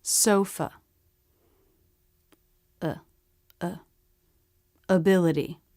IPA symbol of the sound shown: ə